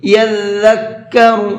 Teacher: او یذکر فتنفعہ الذکرى، او یذکر، یہاں پر ذال ہے، زا نہیں ہے، اور یہ ذال نرمی کے ساتھ میں پڑھا جاتا ہے اور اس کا ساؤنڈ زا سے بالکل الگ ہوتا ہے، اس کے اندر سیٹی نہیں ہوتی ہے۔ یذکر، اس طرح سے پڑھنا ہے۔